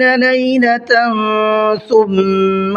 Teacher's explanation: لیلۃ دیکھیے یہاں پر تا کے اوپر تنوین ہے اور تنوین کے بعد میں سا آ رہا ہے، تو یہ اخفا کا قاعدہ ہے